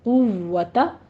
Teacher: ان القوۃ، قوت، ایک ساؤنڈ آپ کی آتی ہے کفتا، یہ بعض بہنوں کو میں سنتی ہوں کفتا، ایسا بھی ہو جاتا ہے کیونکہ واو فا با میم یہ مخرج تو ہونٹ ہی ہے نا، تو دھیان رکھنا ہے آپ نے کہ صرف آپ کے ہونٹ واو کے اوپر گول ہوں، فا کا با کا ساؤنڈ نہیں آنا چاہیے